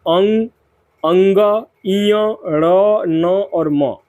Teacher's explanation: ये ऐसे वर्ण है जिनका उच्चारण नाकों के द्वारा होता है। यानी कि नासिक व्यंजन कहे जाते हैं।